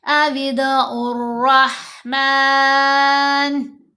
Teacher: ये रा से पहले अलिफ और लाम 2 हरूफ आ रहे हैं और दोनों ही साइलेंट हैं। क्यों? क्योंकि रा हरूफ शमसी में से है।